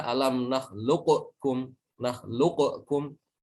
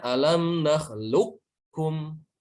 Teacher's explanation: Mau membaca qaf tapi tidak jadi, yang keluar adalah kaf. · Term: idgham naqis